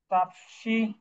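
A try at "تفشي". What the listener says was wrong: এই ছয় নম্বর যেটা আছে এটি কিন্তু তাফাস শি হবে, তাফসি না হয়ে তাফাশি। তাফাশ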